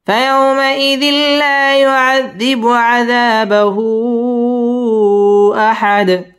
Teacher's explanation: আযাবাহু মধ্যে মুনফাসিল তিন আলিফ টান দিয়ে পড়তে হবে · ফায়াউমাইযিল ইদগামে বালা গুন্না ছাড়া পড়তে হবে